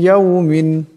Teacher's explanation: এ নুন সাকিনকে ইয়ার সাথে মিলাইয়া পড়তে হবে এবং এক আলিফ পরিমাণ গুন্না হবে। মিম, ইয়া, জের, মি, এমন করে এক আলিফ পরিমাণ গুন্না করিয়া পড়তে হবে। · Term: ঈদগামের গুন্না